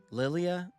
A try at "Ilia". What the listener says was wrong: Cuz it's it's an I. It's a capital I L I A.